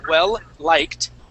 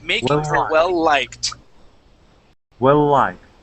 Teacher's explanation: going to stop we're not going to say well liked okay you're going to use the L at the end of well to to run right into liked · You're going to link the end of well into liked. So we're not going to stop.